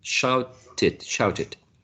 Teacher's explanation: Shout ends in t, therefore we add an additional syllable.